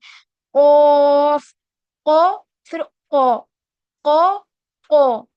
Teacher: क्योंकि जब हम जबान को पीछे की तरफ प्रेशर लगाएंगे, जितने भी लेटर्स हम हैवी पढ़ रहे हैं उनके मखरज में क्या सिमिलैरिटी हमें नजर आ रही है, कि उसको हैवी करने के लिए हम अपने होठों को गोल नहीं कर रहे हैं, हम क्या कर रहे हैं, जबान को पीछे की तरफ प्रेशर दे रहे हैं, उससे वो हैवी साउंड हमें प्रोड्यूस हो रहा है।